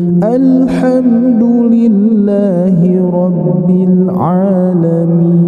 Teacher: Irama yang ketiga nada yang ketiga turun